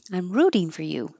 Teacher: Not many connections, but the T changes to a D, and you can shorten for by making it fur.